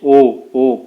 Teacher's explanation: ओ कंठ और ओष्ठ दोनों से ओ जो है निकलता है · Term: कंठोष्ठ